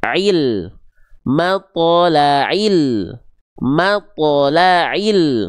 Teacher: Jadi, ainnya jangan dipanjang-panjangkan.